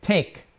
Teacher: The k in take, that's kind of an unvoiced stop sound.